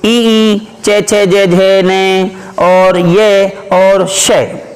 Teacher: इन वर्णों का उच्चारण स्थान होता है तालु